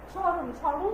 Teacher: তাহলে আমাদের যে উচ্চারণটা এবং যে নিয়মটা, যে শব্দের শুরুতে যদি ব্যঞ্জন বর্ণ থাকে এবং সেই ব্যঞ্জন বর্ণের সাথে যদি মফলা যুক্ত থাকে তাহলে সেই মফলার কোনো উচ্চারণ হয় না।